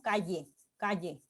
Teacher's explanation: Esta Y invertida, como les decía, funciona como lateral palatal sonora